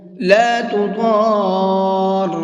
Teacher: اس لفظ کے اندر ایک تو ضاد ہے، اس کو منہ بھر کے پڑھیں گے۔ دوسرا یہ بڑا مد بنا ہوا ہے، تو اس کو 4 سے 5 الف کی برابر کھینچ کر کے پڑھیں گے۔